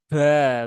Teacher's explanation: jangan sampai ada hembusan nafasnya ya